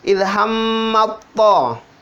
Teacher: Ilhammat to, langsung masuk di to, tidak dibaca lagi tanya. Ta yang pertama itu tanya itu dileburkan, langsung masuk di to. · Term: idgham mutajannisain